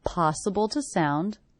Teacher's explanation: The word to is definitely reduced to the schwa